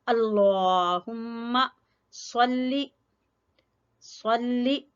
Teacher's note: दोनों होंठों को मिला लेंगे मीम पर आकर